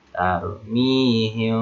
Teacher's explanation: Mim bertemu dengan ba, maka dibaca samar mimnya. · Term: Ikhfa safawi